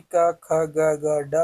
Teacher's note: का वर्ग यानी का, ख, ग, डा कंठ से बोले जाएंगे